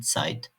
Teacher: Sanki T ve S harfleri yan yanaymış gibi ts sesi çıkar.